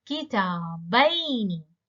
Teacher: the ya is no longer a long vowel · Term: mansub musanna